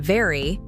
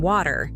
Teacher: For V, as in very, your bottom lip touches your upper teeth. For W, as in water, your lips make a round shape without touching your teeth.